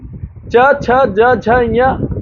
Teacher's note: च छ ज झ ञ इनका उच्चारण स्थान तालू होता है